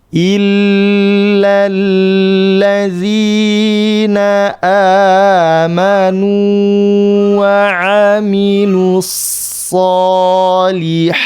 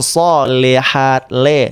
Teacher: membaca harokat kasrah yang bunyi vokal harusnya i tapi dibaca e. Sole, le, sole.